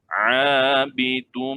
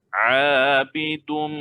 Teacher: Pastikan tanwin masuk pada mim, kita kena dengung. Dia dengung 2 harakat. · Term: idgham ma'al ghunnah